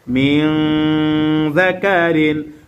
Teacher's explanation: মিন নুন সাকিনকে গুন্নাহ করেছে কেন? কারণ নুন সাকিনে পরে জাল আসছে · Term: ইকফার গুন্নাহ